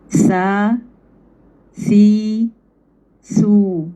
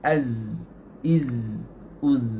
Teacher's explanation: Sebab huruf sin dia bunyi tu, dia ada hams. Dia ada udara keluar. Zai tak ada.